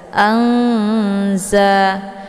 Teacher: Jadi ikhfa awsat ini adalah pertengahan antar makharijul huruf nun dengan huruf za, itu tidak terlalu dekat juga tidak terlalu jauh. Maka cara bacanya nunnya disamarkan kemudian siap-siap mau masuk ke huruf za. Anza. Nah, untuk ikhfa awsat ini kalau dibandingkan tingkat kesamaran dan dengungan itu seimbang atau setara ya antar dengung dengan samar.